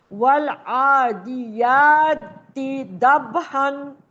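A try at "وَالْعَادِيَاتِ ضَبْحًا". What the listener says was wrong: وقت کریں دو زبر کی جگہ ایک زبر پڑھیں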